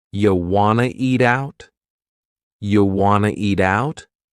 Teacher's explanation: We've dropped the question word completely, do. · we have reduced want to become wanna. This is a common reduction in English.